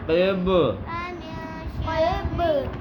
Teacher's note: با کے آخر میں بھی قلقلہ ہوگا